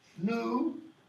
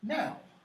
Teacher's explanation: So, new, what happens to the oo? Becomes ow.